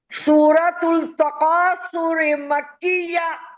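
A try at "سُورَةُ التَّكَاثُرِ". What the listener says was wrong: तुल नहीं बोलना, देखिए ये ता से मिल रहे हैं, क्या कहना है? तुत। जी, सूरतुत तकासुरी। सुने, सूरतुत, सू को खींचे, तकासुरी।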